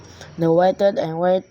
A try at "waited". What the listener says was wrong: Ya, waited and waited. Tidak pernah dibaca e, ya.